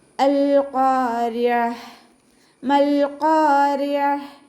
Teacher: ത മർബൂത്തയിൽ നിർത്തുമ്പോൾ ഹ സുക്കൂനാക്കിക്കൊണ്ട് നിർത്തുക · ഖാഫ് ഇസ്തിഅലാൻ്റെ ലെറ്ററാണ്, അപ്പോൾ അതിനെ നല്ലോണം ഉയർത്തിയിട്ട് പറയാൻ ശ്രദ്ധിക്കുക. റ കെസ്റ ആയതുകൊണ്ട് നമ്മൾ താഴ്ത്തി ഉച്ചരിക്കും. അതിൻ്റെ മഹ്റജ് വസത്തുൽ ഹൽക്കാണ്, അപ്പോൾ അതിൻ്റെ സൗണ്ട് ക്ലിയർ ആക്കി കൊടുക്കുക.